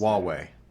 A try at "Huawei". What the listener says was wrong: Nope. H is silent. Huawei.